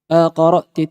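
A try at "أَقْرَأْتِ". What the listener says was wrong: Pendek. Hamzah pendek.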